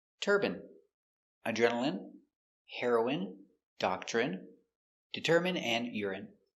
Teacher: all of these words are pronounced with the in sound for the i n e.